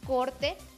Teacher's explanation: La O es abierta cuando está en sílaba trabada.